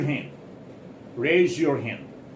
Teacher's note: When you are speaking very fast, very hurriedly, then you need not even pronounce this D softly. You may simply drop it. You may simply make it absolutely silent.